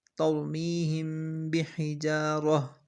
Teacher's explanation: میم ساکن کے بعد با ہو تو غنہ کے ساتھ اخوا ہوگا، اس کو اخوائے شفوی کہتے ہیں